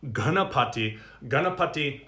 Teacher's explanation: uh the n with the dot underneath that means it's it's a retroflex sound of the tongue the tongue is actually coming back in the mouth slightly